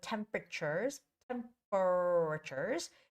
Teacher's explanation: with the first syllable stress